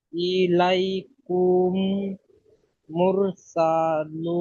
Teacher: মিম সাকিনের পরে মিম এসছে, তাই মিম সাকিনকে এক আলিফ মিমকে পরিমাণ মিমের গুণনা সাথে সহ মিলিয়ে, মিমকে মিমের সাথে মিলিয়ে এক আলিফ পরিমাণ গুণনা সহ পড়তে হবে, একেই ঈদগামে শাফাবি বলে।